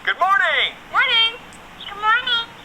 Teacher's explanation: general American intonations, which is flatter and more conversational tone